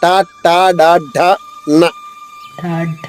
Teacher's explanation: నాలిక పైకెత్తి ఆ ముందు భాగంలో నొక్కి ట పలుకుతాం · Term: మూర్ధన్యము